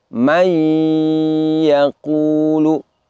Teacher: nun sukun bunyinya lebur atau menghilang, namun masih tersisa dengungnya. Artinya bunyinya tidak lagi bunyi nun, tetapi masih ada salah satu sifatnya yaitu dengung.